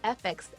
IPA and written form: ˌɛf ˈɛks (f(x))